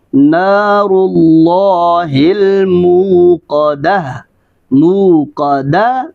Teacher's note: تو واو کو گول ادائیگی کے ساتھ ادا کریں گے، یعنی ہونٹ گول ہوں گے